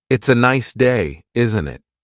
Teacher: The tone going up at the end tells the listener that you're asking a question. If you're making a statement, the intonation usually goes down at the end.